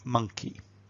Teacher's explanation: So let's take the word 'monkey.' And when we hear 'monkey' we know that that first syllable is kind of big and round and strong. The second syllable is quite weak. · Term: word stress